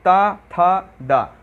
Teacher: आपकी जो जीभ है वो दांतों पे सपोर्ट कर रही होगी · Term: दंतव्य व्यंजन